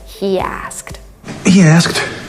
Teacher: So this he asked, we have this extra Y between these two words, and this is why it sounds like he asked. He asked. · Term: intrusion